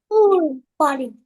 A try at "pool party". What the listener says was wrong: Very good boy.